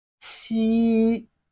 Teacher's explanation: It has a flat tone, which is the first tone of Chinese language. Qi. Just like when you want to make the sound.